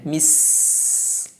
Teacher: Sin sifatnya hams, sifatnya rakhawah, sifat istifal, sifatnya juga safir, ada suara tajamnya. Mis, harus dijelaskan ini suara tajamnya.